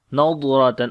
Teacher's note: On the dwad and ra we read in heavy sound, and then on the dwad do not make qalqala sound.